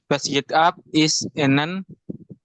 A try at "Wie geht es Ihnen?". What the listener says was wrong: Wie geht es Ihnen? Ya, kita baca itu bukan I dalam bahasa Inggris. Wie geht es Ihnen? Wie geht